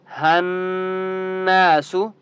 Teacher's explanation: یا کے اوپر تشدید ہے، مضبوطی کے ساتھ پڑھیں گے، ہناسو، نون کے اوپر تشدید ہے تو آپ نے یہاں پر غنہ کرنا ہے